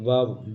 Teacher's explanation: वकार दंतोष्ठ होता है, वो दांत और ओष्ठ मिलकर बना है ना